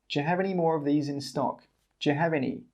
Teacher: We don't say 'do you'. Again, we say 'juh'.